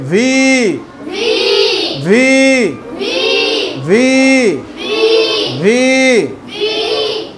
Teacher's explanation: নিচের ঠোঁট উপরের দাঁত থেকে